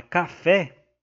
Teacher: a última sílaba é a tônica que é a sílaba que tá acentuada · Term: oxítona